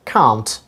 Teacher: in british pronunciation it is pronounced can't long sound r has been used here ka ah na and ta can't